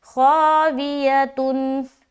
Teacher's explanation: خا الف زبر خا، چونکہ خا موٹا حرف ہے تو الف مدہ کرتے ہوئے موٹا پڑھیں گے